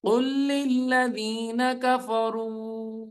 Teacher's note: قاف لام سے ملے گا، لام لام سے ملے گی، قاف لام پیش، قل لام لام زیر لل، قل لل لام زبر لا، قل لل ذال یا در ذی، للذین کفروا پہ مد ہوگی اور حروف مدہ ہے.